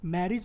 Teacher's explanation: मैरिज में ए को तो स्ट्रेस हुआ, एज ये स्ट्रेस नहीं हुआ